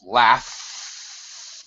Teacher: If I pronounce laugh and I hold that F, nothing happening here with my throat on the F. That's an unvoiced sound. It's just air coming out.